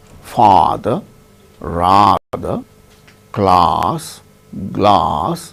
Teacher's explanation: the tongue goes down then cavity is totally open